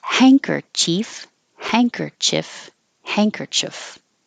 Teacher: And this looks very weird because it looks like hand kerchief, but we make this ND change into an NG. So instead of an N in the front, hand, it's hang, like a hanger, and you're going up in the back.